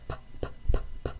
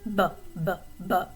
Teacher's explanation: P is voiceless, B is voiced.